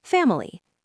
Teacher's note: We stress the first syllable, fam. The middle syllable with the letter I gets reduced to awah or sometimes it disappears entirely.